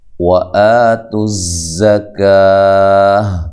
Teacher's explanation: آ کو لمبا کرنا مد اصلی ہے